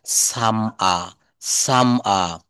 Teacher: শব্দের শেষে বা বাক্যের শেষে আর থাকলে ব্রিটিশরা কিন্তু আর এর উচ্চারণটা করে না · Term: ব্রিটিশ অ্যাকসেন্টে